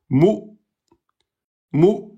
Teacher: Vous fermez les cordes vocales et vous bougez plus. Vous relâchez pas les cordes vocales. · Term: hamza sun